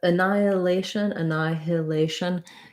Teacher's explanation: typically in american speech we're not going to really say that h sound it's going to get dropped